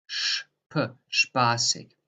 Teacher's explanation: So that is in German a sh, p. So you pronounce like a SCH and then a P in addition.